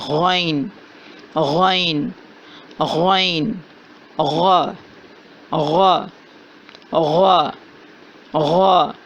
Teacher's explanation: غین کی ادائیگی ادنی حلق سے ہو رہی ہے، یعنی کہ جہاں زبان ختم ہو رہی ہے اور حلق شروع ہو رہا ہے، حلق نمبر 1 ہے، حلق کا پہلا حصہ ہے، وہاں سے غین کی ادائیگی ہو رہی ہے اور اس کی صفت ہے کہ اس کو موٹا پڑھا جاتا ہے۔